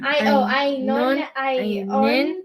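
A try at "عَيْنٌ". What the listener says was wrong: the N is part of the word. Un. N. Ainun.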